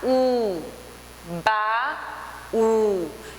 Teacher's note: o baú tem a última sílaba, que é o U, como tonicidade maior, então é oxítona. E é acentuado porque ele é um ditongo.